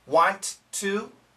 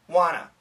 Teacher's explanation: the n kills both T's